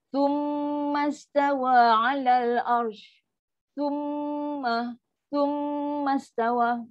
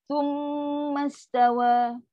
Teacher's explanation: Mim sabdu kan wajibul gunnah. Dengar paling sempurna.